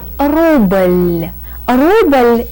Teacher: Rubble ends in a very light very soft l sound and to show that this L gives us a very very